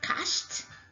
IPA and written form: kӕʃt (cashed)